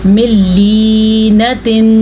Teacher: ये हमने लाम के बाद या की वजह से इसको खींच के पढ़ा क्योंकि ये या मद्दा है